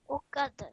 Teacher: join the kaf to the dal, do so with a bit of jerk on the dal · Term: qalqala